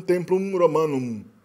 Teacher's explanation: o M final no latim era pronunciado mais como uma nasal, no latim bem clássico, né? Não assim como uma bilabial.